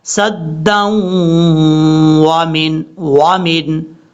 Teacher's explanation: دال کو واو سے ملاتے ہوئے یہاں غنہ کریں گے، یہ ادغام یرملون کا غنہ ہوگا.